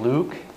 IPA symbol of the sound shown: u